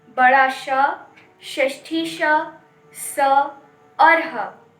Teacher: जिन व्यंजनों का उच्चारण करते समय विशेष प्रकार की गर्म वायु निकलती है, उन्हें ऊष्म व्यंजन कहते हैं। इन व्यंजनों के उच्चारण के समय श्वास वायु रगड़ खाकर निकलती है।